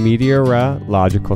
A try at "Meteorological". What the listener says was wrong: Okay, but say it like one word now.